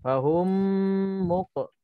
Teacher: Mim mati bertemu dengan mim. Idgham mithlain saghir. Bacaannya dengung 2 harakat.